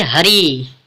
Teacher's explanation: हरि में अगर विच्छेद करेंगे तो आधा ह, आधा अ और आधा र प्लस ई से मिलकर बना होता है हरि। यहाँ पर ई वर्ण पर बालाघात हो रहा है, अर्थात ई वर्ण पर अधिक बल लग रहा है